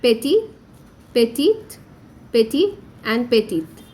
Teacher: The pronunciation of all the forms will be very similar, but there will be more emphasis on the consonants in the feminine forms.